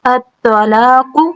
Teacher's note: جب بھی الف اور لام سے سٹارٹ ہوگا کسی بھی کلمے کا اور کوئی حرکت نہ ہو سٹارٹ میں تو ہم پھر خود حرکت لگاتے ہیں، الف اور لام آئے تو ہم فتحہ دیتے ہیں، ٹھیک ہے۔ الطلاق، لا لام باریک ہے اور کھڑی زبر ہے، یعنی کہ الف صغیرہ ہے، دو حرکہ لمبا رہے گا۔